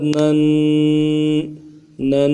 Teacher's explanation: اب تنوین کے ساتھ پڑھتے ہیں، نون دو زبر نن، نن، نون دو زبر نن۔ تنوین کا غنہ جو ہے 1 الف کی مقدار میں اس کو غنہ کی کھینچیں گے اور ناک میں آواز لے جائیں گے، اس کو غنہ کہا جاتا ہے۔